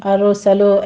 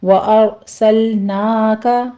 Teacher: لام کو آپ نے حرکت نہیں دینی